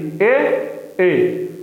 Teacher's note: भीतर से भी आवाज आएगी कंठ से, और तालव्य और तालु से भी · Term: कंठ तालव्य